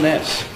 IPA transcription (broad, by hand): s